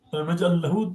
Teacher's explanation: But what we say, alam naj'al lahu, that first lam, the sakin of the lam disappears, gets assimilated to the second lam, and then lam takes shadda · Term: assimilation